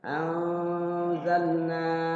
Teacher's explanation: nun mati ketemu zal. Ikhfa.